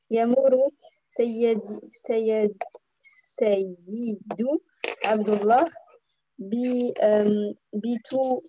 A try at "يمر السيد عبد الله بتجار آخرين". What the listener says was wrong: يمر السيد. Donc, alif lam. Si tu t'arrêtes, c'est يمر السيد.